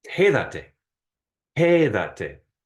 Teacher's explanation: So it's quédate. And you have to put the emphasis on the third to last syllable when that extra te is attached. And that's why you have that accent mark there.